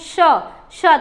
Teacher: मुख में घर्षण होता है और मुख से ऊष्मा यानी गर्म वायु निकलती है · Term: ऊष्म व्यंजन